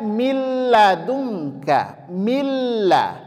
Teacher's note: sedangkan perbedaannya di sini dibaca milladunka Milla huruf nunnya hilang total Oke huruf nunnya hilang total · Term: idgham bila ghunah